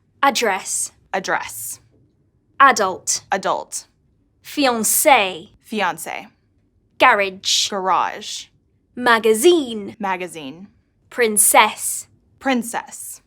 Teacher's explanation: Word stress also shows some differences between British and American English. Some words, especially when they are of French origin, are stressed in the last syllable in American English, while in British English, the stress is on the first one.